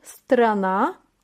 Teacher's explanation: vurgu son A harfini düşüyor